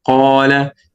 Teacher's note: You have the highest level of heaviness, as you see here, when the letter of Tafkhim with Fatha and followed by an Alif.